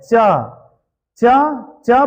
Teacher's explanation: च बोलिएगा ना तो जिह्वा जो है ऊपर सटता है तालु में, तो अर्थात यह च का उच्चारण तालु है।